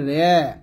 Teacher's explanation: জবর এবং জেরের মাঝামাঝি একের পড়াকে বলা হয় এমালা